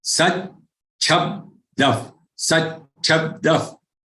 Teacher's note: There is half cha followed by cha, which is followed by half ba and which is followed by da.